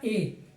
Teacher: तो ए दे तो कंठ तालु, ए और ए कंठ और तालु से उच्चारित होने वाले वर्ण हैं, तो यहाँ से ए होगा। क्योंकि ए में एक ऐसा गुण है कि कंठ से भी उच्चारित होता है, तालु से, कंठ तालु दोनों से उच्चारित होता है ए